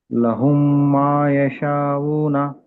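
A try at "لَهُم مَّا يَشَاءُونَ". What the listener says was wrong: మీరు దీర్ఘం తీయవలసిన చోట అంత పూర్తిగా తీయట్లేదు. ఒకసారి మనం దీర్ఘాల పాఠాలన్నీ చదువుకున్నాం కదా, దాన్ని కూడా గుర్తుపెట్టుకుని చదవండి.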